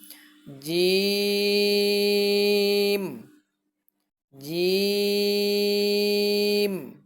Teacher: জিম বলার সময় বাতাস বের হবে না